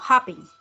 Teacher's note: La última sílaba no tiene acento